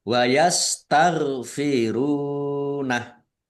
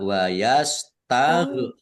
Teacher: gin sukun ya. Ini bukan qalqalah jangan dipantulkan ya.